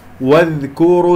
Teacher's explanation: أفخم الكاف لأنها جاورت الراء